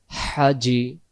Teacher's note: জিম অক্ষরে জিহ্বার মাঝখান থেকে শক্ত করে পড়তে হয়